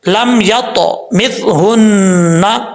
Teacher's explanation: आगे है लम यत मिथहुन्ना, या के बाद ता है हुरूफ़ मुस्ताला में से है, यहाँ कलकला भी होगा, पुर भी पढ़ा जाएगा, दोनों सूरतें यहाँ पे पढ़ी जाएंगी।